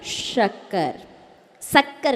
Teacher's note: तालव्य सा जिसमें आपकी जीभ ऊपर तालू को टच करे